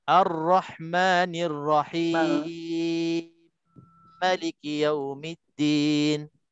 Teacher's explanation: Dia baca idghamkan mim, idghamkan kedua huruf yang sama. Idgham mutamathilain bagi Susi ni idgham mutamathilain kabir.